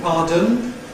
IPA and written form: ˈpɑːdən (pardon)